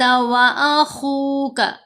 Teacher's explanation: خا کو بھی موٹا پڑھیں گے، حروف مستعلیہ میں سے ہے